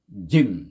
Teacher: Rapatkan lidah tu. Cuba rapatkan perut lidah yang tengah-tengah tu. Jim. Kemudian lepaskan. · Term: huruf jim